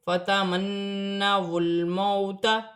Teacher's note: لام ساکن ہے، لام ساکن کو واو کی حرکت کے ساتھ ملا کر پڑھا جائے گا